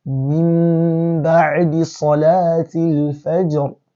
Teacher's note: Al-Iqlaab means changing or substituting this Noon to Mim and now inserting the Mim into Ba